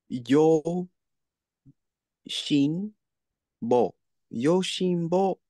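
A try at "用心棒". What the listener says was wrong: This actually has rendaku. So we get two tenten marks right there.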